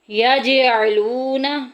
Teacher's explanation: یج میں دیکھیں کلکلا ہو رہا ہے